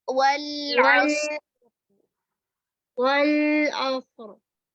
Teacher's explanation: والعصر، والعصر، را کو ہلائیں گے نہیں، را میں توسط